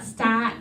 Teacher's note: So again, stat, if you don't have the R, but also start, you can also still have that really, it's a fronted ah sound. Again, younger people are more likely to have sort of a back start.